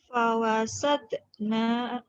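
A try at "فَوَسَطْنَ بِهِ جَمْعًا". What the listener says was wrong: fawasat nanya pendek. Fawasat nabihi nanya pendek ya.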